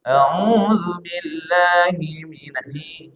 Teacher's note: Hi tidak boleh masuk ke hidung.